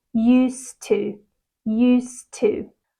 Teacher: when used is followed by two often that D is silent okay and we connect the two words together